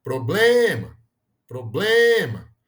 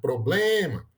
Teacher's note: a gente coloca a força da pronúncia na penúltima sílaba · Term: paroxítona